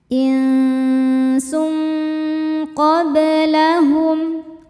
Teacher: Sebab ada tanwin dhammah menghadapi huruf qof. Cara bacanya tanwin disamarkan menuju qof disertai dengungan. Dengungnya besar ya karena qof ini makhrajnya jauh dari nun. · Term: ikhfa hakiki ab'ad